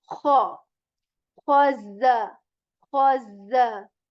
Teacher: This kha letter is articulated from the portion of the throat that is the upper one. Okay, that is the portion near to the mouth, and we say kha with scratch, and we say like kha, khaza, khaza. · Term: kha sound